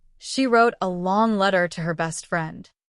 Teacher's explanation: The stressed words here are wrote, long letter, and best friend.